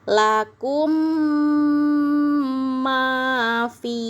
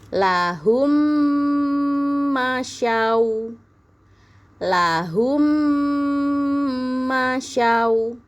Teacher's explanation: Cara membacanya dengung yang lama, ditahan yang lama emnya. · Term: idgham mimi